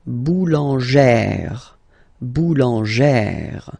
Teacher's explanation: you pronounce it like E, really open E sound